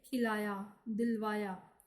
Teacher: खी तथा वा, इन पर बल देने के कारण बलाघात है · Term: शब्द बलाघात